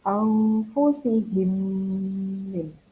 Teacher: jadi ini mimnya berubah jadi bertasdid ya. Jadi ada dengungnya sebagai hun. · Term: idgham mimi